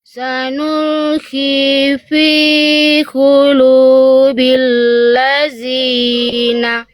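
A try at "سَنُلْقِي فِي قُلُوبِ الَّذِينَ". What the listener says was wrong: Oke, kita latihan huruf dzal Bunda. Jadi huruf dzal itu Bunda ujung lidahnya udah nempel ke ujung gigi sari atas belum? dzal itu ujung lidah kita harus nempel ke ujung gigi sari atas. Nah, sekarang Bunda kita latihan huruf dzal.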